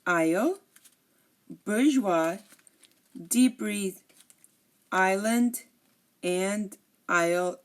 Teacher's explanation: you notice that I did not pronounce the S in any of these